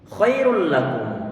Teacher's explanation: huruf nun patut untuk diidghamkan, dimasukkan dalam huruf setelahnya